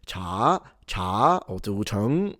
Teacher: the second tone, appears to go higher. So you will hear Beijing speakers that will say cha, cha, or zu cheng, like it really goes high.